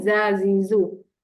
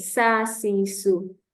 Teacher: bila hujung lidah ditekankan ke gusi bawah okey dekat bawah dia tak naik